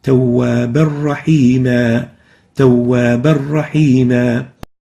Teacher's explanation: There is a tanween here, Tawwaban, followed by a ra. When we merge them together, we don't pronounce the tanween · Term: Idgham without Ghunnah